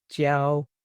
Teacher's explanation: Jiao should be first tone if it's used as a verb, and fourth tone if it's used as a noun. When spoken alone, since it will usually be a verb, you'll just hear it in the first tone, jiao.